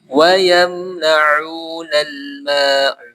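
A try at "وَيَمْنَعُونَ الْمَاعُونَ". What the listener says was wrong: Ain yang kedua tekankan lagi. Wa yamna'una al-ma'un.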